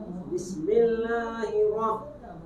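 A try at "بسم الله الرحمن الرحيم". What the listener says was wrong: Tasdid. Hirrahma. Ro-nya tasdid sudah. Bismillahirrahmanirrahim. Nah, masih kaku ya. Hirro. Hi-nya tarik. Hirro. Nirro. Ni-nya tarik. Nirro. Bismillahirrahmanirrahim. Jadi kan hirrahma, bukan hi tapi kayak hirrahma. Nah, i-nya enggak jelas.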